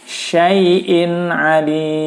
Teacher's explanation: Wa huwa bikulli syai'in alim. Tanwin bertemu ain, hukumnya adalah izhar, maka dibacanya jelas suara nun sukun atau tanwinnya, suara n-nya.